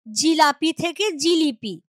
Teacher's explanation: পূর্ববর্তী স্বর এবং পরবর্তী স্বরের প্রভাবে মাঝখানে থাকা স্বরধ্বনিটা পরিবর্তিত হয় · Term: মধ্যগত স্বরসঙ্গতি